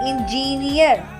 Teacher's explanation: Engine, engineer, we give stress to near NEER